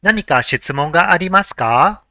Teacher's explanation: Since it is a question, it has to end with ka with a rising intonation.